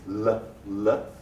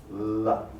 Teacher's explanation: the tip of the tongue touches behind the teeth, L. And the air flows around the sides of the tongue.